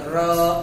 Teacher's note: ऐसे व्यंजन जिसका उच्चारण करते समय जीभ ऐसे प्रतीत होता है हमें कि हमारी जीभ लुढ़क रही है, या उच्चारण करते समय जीभ जो होती है तालू से लुढ़क कर स्पर्श करती है, तो उसे हम क्या कहते हैं, लुंठित व्यंजन। जैसे आप र बोलोगे, र एक प्रकार से कंपन होता है जीभ में